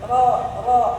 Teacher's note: berasa kok ada getaran di pas ujung banget lidah itu